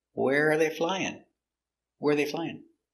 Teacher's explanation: it's an information question starts with a question word where and intonation goes down at the end